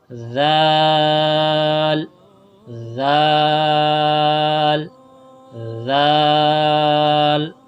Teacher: ذال کی ادائیگی میں یہ ہے کہ زبان کی نوک اوپر کے دانتوں سے لگے